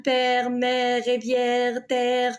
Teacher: Pour l'accent grave, on a la bouche plus ouverte